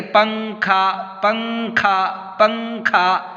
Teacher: یہ پنکھا کا نون جو ہے یہ ناک میں اس کی آواز چھپ رہی ہے کہ نہیں؟ اصل میں پنکھا نہ ہونا چاہیے، لیکن پنکھا ہم کہہ رہے ہیں، پنکھا کہہ رہے ہیں۔ · نون کی آواز کو ناک میں چھپا کر پڑھیں گے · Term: اخفا